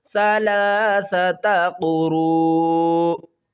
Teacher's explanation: چاہیے، اور قاف پیش کو را، واو مد پیش رو، اور جب ہم رو کو پڑھیں گے تو 5 الف کی مقدار کھینچ کر آگے حمزہ کے ساتھ ملائیں گے · لاسٹ میں حمزہ کی آواز آنی چاہیے